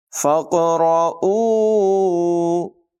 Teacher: قاف کی آواز میں قلقلہ ہوگا، پر آواز میں پڑھیں گے، فا کو قاف کے ساتھ ملانا ہے، الف نہیں پڑھا جائے گا۔